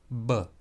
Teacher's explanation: b is a bilabial consonant, and it is voiced. That means you pronounce it with your lips, and it is voiced, b.